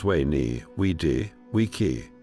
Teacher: The C was always a hard K sound · The V was pronounced more like a W, so Veni became Veni.